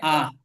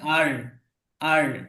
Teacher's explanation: তো যারা ব্রিটিশ আছে যারা, তারা উচ্চারণটা করে আ। আর যারা ইউএসএ থাকে, আমেরিকায় থাকে, তারা উচ্চারণ করে আর, আর।